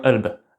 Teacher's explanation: Donc kalb, le cœur ça devient alb.